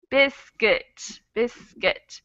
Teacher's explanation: The word biscuit has two vowels in it. The first vowel sound is emphasized. It's the stressed syllable, biscuit. So that second vowel sound really becomes an sound. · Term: schwa sound